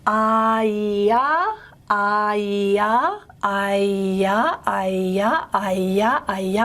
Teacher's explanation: So the semivowel counterpart of I is Y. The palatal glide. Now remember, palatal is front, a front vowel.